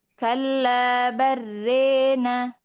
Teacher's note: ada imalah pada fathah ro dan alif